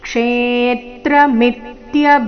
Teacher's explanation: ಕ್ಷೇ ಮೇಲೆ ಆಘಾತ ಮುಂದೆ ಮಿತ್ಯ ಮಿ ಮೇಲೆ ಆಘಾತ